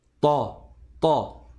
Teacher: A'ta, le ta il est grave, il est emphatique, c'est pas te.